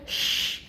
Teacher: اسی کو تفشی کہتے ہیں. شین کے مخرج میں وسط اللسان اور تالو کے بیچ میں ہم نے کہا تھا گیپ رہتا ہے